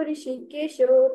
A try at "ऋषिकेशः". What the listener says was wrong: बहुत सुंदर बेटा, थोड़ा थोड़ा हम इसको और उच्चारण को स्पष्ट करेंगे। अप्रमेय ऋषिकेश, ऋषिकेशो नहीं है ना, उच्चारण थोड़ा और राइट करेंगे।